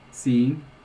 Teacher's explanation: I don't have a velar nasal there.